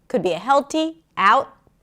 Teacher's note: The word out is pronounced with the A as in cat, and then we shift to the sound, ow, and then we end it with a T. Could be a held T, out, or a pop T, out. Both are fine.